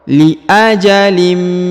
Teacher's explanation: bertemu dengan mim bertasdid atau Mim bertemu dengan huruf tanwin maka ditahan dan ditekan serta didengungkan dua harakat